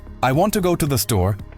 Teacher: the stressed words are want, go, and store. The rest, I, to, the, are reduced, almost whispered. The timing between the stressed beats stays steady, like a metronome, and everything else is squeezed in to match.